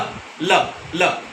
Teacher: ल में हमारी जीभ लगती तो मूर्धा के साथ है, लेकिन इसको कहते हैं लुंठित, क्योंकि उसको टकरा के एकदम उसी झटके के साथ जीभ वापस आती है।